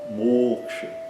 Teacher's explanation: o fechado longo, né? E o curto no final